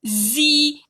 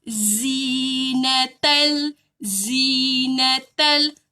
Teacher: Hujung lidah sentuh gigi bawah. Ada huruf zai dan ada bunyi lebah tu.